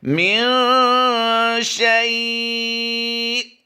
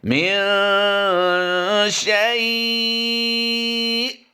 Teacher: حمزہ ساکنہ کو جھٹکا دے کر پڑھتے ہیں، تو اس لیے یہاں پر ہم نے جھٹکا بھی دینا ہے اور شیء کو ہم نے لمبا بھی کرنا ہے